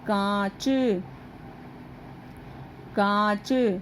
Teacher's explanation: नाक और मुंह दोनों से ही निकलती है। जैसे कांच, कांच, तो कांच में ये ऊपर चंद्र बिंदु लगा।